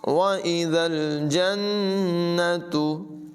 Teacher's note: ज़ाल में सीट की आवाज़ पैदा नहीं होने देंगे, नून मुशद्दद में गुन्ना होगा।